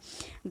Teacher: मुख से अधिक हवा निकले उन्हें क्या कहते हैं, महाप्राण व्यंजन कहते हैं